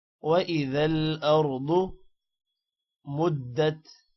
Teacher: را کو بھی موٹا کرنا ہے، ضاد کو بھی موٹا کرنا ہے اور ضاد کو لمبا نہیں کرنا